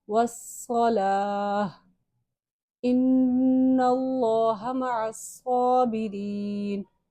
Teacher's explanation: نون مشدد ہے، یہاں پہ غنہ ہوگا. اللہ کے نام سے پہلے زبر آ رہا ہے تو ہم اس کو موٹا پڑھیں گے.